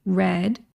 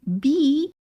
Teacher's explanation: If you're watching on YouTube, you can see my jaw when I say red, my jaw opens. When I say be, my jaw is a lot more closed